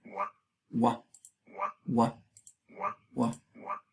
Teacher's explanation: Aquí lo tenemos y no sé si se puede oír, pero ustedes pueden ver que tiene una doble articulación, tanto los labios como el velo aquí. Entonces es labio velar